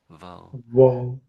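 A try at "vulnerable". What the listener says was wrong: it's to me, it sounds like you're just putting a W at the front when you're saying it. so the V sound is always pronounced by using your lower lip pressed up against your upper teeth to get that the V, V, V, V.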